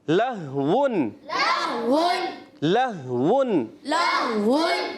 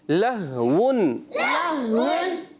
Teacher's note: اس میں واو کی ادائیگی ہونٹوں کی گولائی سے